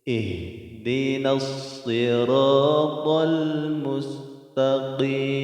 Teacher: Ha ini ha besar, jadi dia tempat keluarnya atau makhrajnya dari tenggorokan paling jauh atau aqsal halqi.